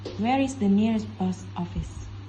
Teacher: this is example of falling intonation in wh question · The word post is falling intonation.